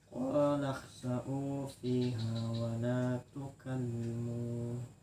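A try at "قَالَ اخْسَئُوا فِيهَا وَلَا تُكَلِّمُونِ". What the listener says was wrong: Tukallimuni kah? Kalau tukallimuna lah. Tuh ninya ada ya yang kada ditulis.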